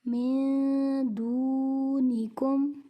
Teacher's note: نون ساکن کے بعد دال حروف اخفا میں سے ہے، یہاں غنہ ہوگا، اخفا ہوگا اور واو مد یہاں پر قاعدہ ہو رہا ہے ایک واو مد کا۔